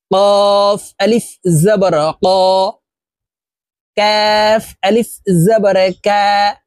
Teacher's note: কাফ হরফ জিহ্বার গোড়া থেকে একটু আগে বাড়াইয়া তার বরাবর উপরের তালুর সঙ্গে লাগাইয়া উচ্চারণ করতে হবে